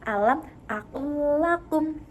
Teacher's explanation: Ada dua huruf yang sama yaitu lam sukun dan juga lam berharokat fathah, di mana huruf lam pertama dimasukkan ke dalam huruf lam kedua, kemudian diberi tasydid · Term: idgham mutamatsilan